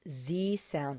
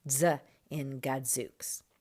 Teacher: give that z sound a little bit more of a d behind it